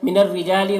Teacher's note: را کو باریک پڑھیں گے، جا میں الف مدہ ہے، کھینچیں گے ایک الف کے برابر۔